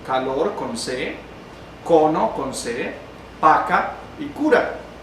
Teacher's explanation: Esas serían las palabras que tenemos como ejemplos de oclusivas velares sordas